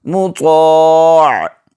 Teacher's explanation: الف زبر طا، مطا، عین دو زیر عن، مطاع، وقفا، مطاع۔ آخر میں عین پڑھیں گے، حلق کے درمیانی حصے سے ادا کریں گے، طا کو موٹا کر کے پڑھیں گے۔